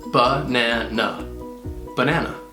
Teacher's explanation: It has 3 syllables, and the first and last syllable have the unstressed schwa sound. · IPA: ə